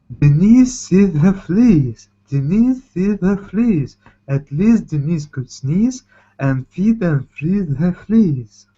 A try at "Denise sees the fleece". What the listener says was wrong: You're pulling down. Denise sees the fleece. Hear that? Going down. Sees the fleece. Denise sees the fleece.